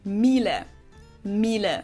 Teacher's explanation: her schwa sound is a little closer to e